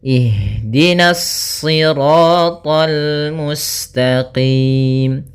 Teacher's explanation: Kemudian hati-hati meskipun to-nya termasuk huruf isti' dan huruf ibtbaq sehingga dia menebal surat to-nya, akan tetapi karena kita bertemu dengan huruf lam maka dia lamnya tipis, jangan ikut tebal